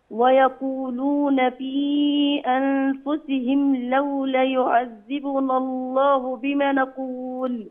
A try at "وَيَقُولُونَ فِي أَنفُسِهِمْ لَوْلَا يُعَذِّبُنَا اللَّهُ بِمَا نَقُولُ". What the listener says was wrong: ماشي كويس، بس في عندك حرفين مد التكلو في لولا وبما. أيوة كده، فخلي بالك من الطبيعي ما يتكلش.